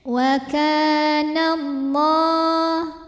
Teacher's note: Lam pada lafaz Allah atau lam jalalah dibunyikan secara tafkhim, sebab huruf sebelumnya yang nun berbaris fathah. Maka cara bacanya ditebalkan, pangkal lidah kita diangkat.